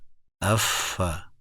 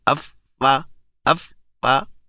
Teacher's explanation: فا جو ہے نا یہ بلا تکلف منہ سے نکل جاتا ہے، پھسلتا ہوا سہولت کے ساتھ نکل جاتا ہے